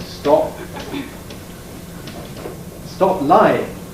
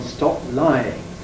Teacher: You can hear how this P is not aspirated, it's probably glottally reinforced and so on.